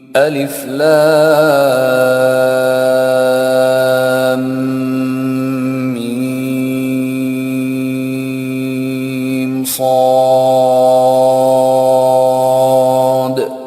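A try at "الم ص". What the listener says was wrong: انہوں نے لام پڑھنے کے بعد غنہ کیا. پھر آپ ہے نا یار غنہ، وہ تجدید تو اسی کے لیے ہے نا. لام کا میم مل رہا ہے وہاں پہ. آپ دیکھیے لام کا میم اور ملاقات ہو رہی 2 میموں کی.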